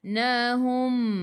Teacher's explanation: Nabainahum, bai masuk ke dalam ya, sebelum ya baris atas, bacaan lin, bacaannya lembut. Nahum, mim berhenti, tutup mulut, rapatkan bibir. Ingat hum bukan home.